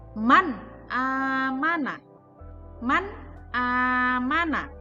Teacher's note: Cara membacanya adalah jelas. Tidak ada bunyi dengung di sana ataupun samar. Jadi, membacanya adalah jelas. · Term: idhar halqi